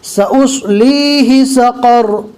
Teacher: صاد اور قوف کو پور پڑھا جائے گا. سأصليه سقر رو کو بھی پور پڑھیں گے اس لیے کہ رکنے کی حالت میں رو کے اوپر جزم آ جائے گا. اب جزم والی رو کو پور اور باریک پڑھنے کے لیے پہلے والے حرف کو دیکھنا ہوگا کہ اس کے اوپر نیچے کیا حرکت ہے. · اب جزم والی رو کو پور اور باریک پڑھنے کے لیے پہلے والے حرف کو دیکھنا ہوگا کہ اس کے اوپر نیچے کیا حرکت ہے. یہاں پر جزم والی رو سے پہلے زبر ہے لہٰذا رو کو پور پڑھا جائے گا